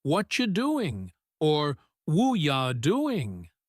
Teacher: Take the phrase, "What are you doing?" In writing, it looks like four separate clear words. But in natural fast speech, native speakers often say something closer to what you doing or wooya doing, blending the sounds together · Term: connected speech